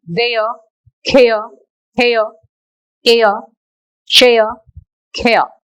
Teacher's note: Don't pronounce that r sound at the ending of all these words. That is r is silent.